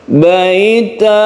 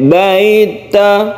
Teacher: baita ini termasuk Mad Iwat yang panjangnya satu Alif saja jangan terlalu panjang baita nah cukup seperti itu ataupun tidak boleh pendek baita itu